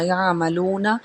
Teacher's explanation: یا عملونا میں عین حرف حلقی میں سے ہے اور واو مدہ بھی ادا ہوگا